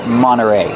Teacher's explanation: You have NT, you don't hear the T when it's between vowels. Monterey. You can say Monterey, but you'll usually hear Monterey.